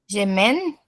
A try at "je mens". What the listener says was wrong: O EN vai ter som de an em francês. Je mens.